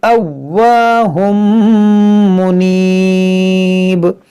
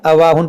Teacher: اس واو پر دیکھیں تشدید ہے اور تشدید والے حرف کو 2 بار پڑھنا ہے